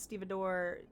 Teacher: The emphasis is on the first syllable, ste.